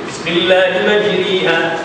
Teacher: bahawa dijadikan alif terlebih hampir kepada ya dan fathah terlebih hampir kepada kasrah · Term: imalah kubra